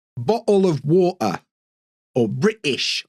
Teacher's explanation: glottal stops some people will pronounce a t some people won't